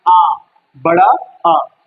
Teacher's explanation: जिसका उच्चारण करते समय मुख पूरा खुला होता है। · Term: विवृत स्वर